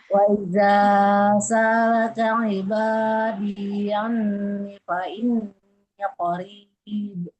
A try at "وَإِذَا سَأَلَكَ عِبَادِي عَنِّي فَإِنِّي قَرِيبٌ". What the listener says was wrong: Panjang pendeknya ada yang keliru sekali Ibu di sini. Anti. Nah, kasroh ketemu ya panjang dua harokat. idza sa'alaka ibadi anni fa inni qarib.